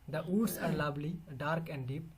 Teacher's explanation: iambic, that first is unstressed, second is stressed, unstressed, stressed, or accented, unaccented, accented, unaccented, accented.